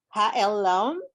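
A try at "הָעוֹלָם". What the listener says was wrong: No, Ha-O-Lam. O, not L. O. Lam.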